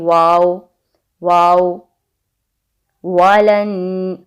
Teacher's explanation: होंठों को गोल करना है, ऊपर वाले दांतों को नीचे वाली लिप पर नहीं लगाना, होंठों को गोल करना है।